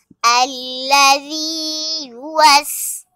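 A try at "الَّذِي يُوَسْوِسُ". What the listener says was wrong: آگے حرکت ہے، اسے کھینچ کے نہیں پڑھیں گے۔ واو زیر وی، الذی یوسوی، آگے حرکت ہے، اسے بھی کھینچ کے نہیں پڑھیں گے۔ سین پیش سو، الذی یوسوسو،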